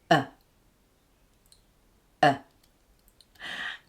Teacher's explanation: the final schwa sound, is known as a central sound, meaning that the tongue, the jaw and the lips are all in a neutral position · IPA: ə